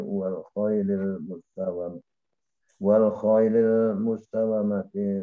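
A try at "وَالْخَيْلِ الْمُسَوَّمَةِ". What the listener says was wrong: Wal khailil musawwamati. Mustaw di tasdidnya wawunya.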